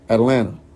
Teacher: you don't have to say the T drop it